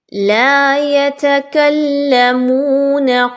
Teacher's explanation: لام مشدد ہے یتکلمون میں، اسی وجہ سے کاف اور لام کو مضبوطی کے ساتھ ملا کے پڑھا جا رہا ہے